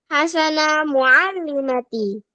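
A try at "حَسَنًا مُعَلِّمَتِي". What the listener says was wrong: Yang benar bukan hasana tapi hasanan.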